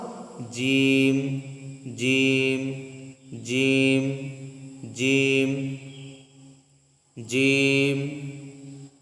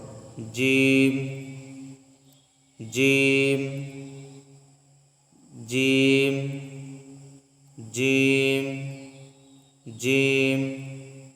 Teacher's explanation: এই জিম হরফটি জিহ্বার মধ্যখান উপরের তালুর সাথে লাগাইয়া আপনার উচ্চারিত হয়